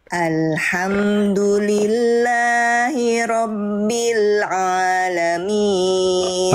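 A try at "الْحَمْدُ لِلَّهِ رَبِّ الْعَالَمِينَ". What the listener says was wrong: Tinggal ain, jangan a. Ain huruf tipis, huruf tebal Bunda. Nah, tipis ya. Buka mulut sambil senyum.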